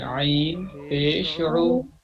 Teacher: او نہیں، عو حلق سے، درمیان حلق سے، یہ بیچ کا جو حصہ ہے